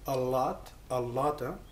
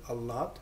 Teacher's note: See that geminate L I'm doing?